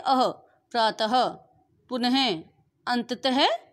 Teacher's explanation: जो विसर्ग होता है उसका जब हम उच्चारण करते हैं तो उसका उच्चारण अह के रूप में किया जाता है